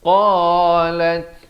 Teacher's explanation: qaf makhrajnya di pangkal lidah. Kalau boleh saya tunjukkan di sini sahabat-sahabat, lidah kita ini di pangkalnya.